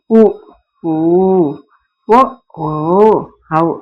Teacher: உ ஒ ஓ அ ஆகியவை பிறக்கும் முறை இந்த உன இசைக்கும் அப்பால் ஐந்தும் இதல் குவிந்து இயலும் இதல் உ அப்படின்னு இதல் குவியும் பாருங்க இந்த இவை இதலை உதட்டை குவித்து கூறுகின்ற முயற்சியால் பிறக்குது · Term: இதழ் குவிந்து